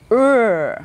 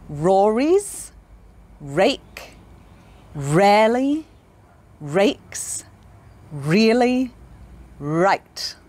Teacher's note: the r sound we make with our lips pushed forward and our tongue back your lips make kind of a circle imagine you're going to kiss someone and then open your lips